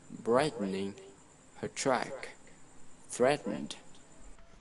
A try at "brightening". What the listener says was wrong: The one sound in Lesson 15 that's hard for you, we call it the glottal stop. For example, the word hat rack. We don't really pronounce the T in there, or the word brightening or important.